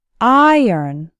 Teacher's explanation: and kn and the second syllable actually sounds like n iron iron has two syllables and the stress is on the first syllable